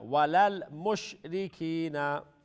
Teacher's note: There's no qalqala on the lam or the sheen.